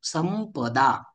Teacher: अनुनासिक व्यंजन कोणते आहे प फ ब भ म आहे म्हणून संपदा शब्दातील अनुस्वाराचे उच्चारण संपदा म सारखे केले जाते